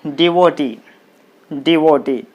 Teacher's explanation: this word is ending with ee so the stress should be on the last syllable